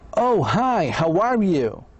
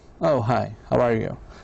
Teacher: when a person likes another person and wants to be friendly, the voices usually goes up